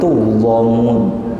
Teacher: Ada yang baca tuzlamun, lamnya itu ditaghlid